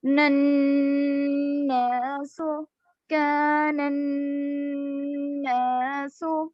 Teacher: نون کو تھوڑی دیر ناک میں آواز روکیں گے نون کی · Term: غنہ